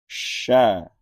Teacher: sha dibunyikan dengan cara bagian tengah lidah menempel ke langit-langit.